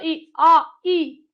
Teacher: इसके बाद अगर हम बोलते हैं आ के बाद बोलो ई, आ ई, तो जब आ के बाद ई बोलते हैं ना तो जीभ आगे आती है